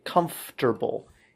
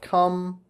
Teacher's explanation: FTR. It's spelled FRT, but it's pronounced FTR.